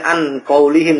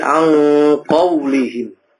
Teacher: huruf nun ketemu qaf itu berubah n-nya menjadi huruf ang menjadi huruf ng, ya. Ang tidak boleh an qaulihim, tapi ang qaulihim dan lain-lainnya.